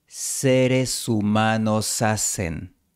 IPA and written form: 'se.ɾe.su'ma.no'sa.sen (seres humanos hacen)